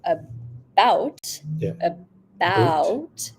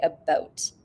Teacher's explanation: Canadian raising affects the height of the tongue when you're making these vowels